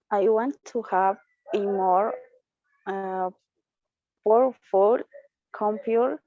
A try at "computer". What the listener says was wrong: Just this word, that U is going to be more like EU, like computer. Computer. Computer.